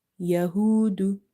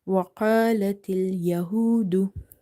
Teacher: This waw is also madda because there is a dhamma before it. So you have to read it by stretching up to one alif.